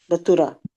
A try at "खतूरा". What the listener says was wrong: खतूरा, काफ है